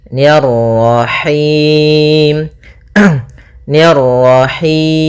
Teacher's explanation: ni tipis ketemu ra yang ra tafkhim, ra tebal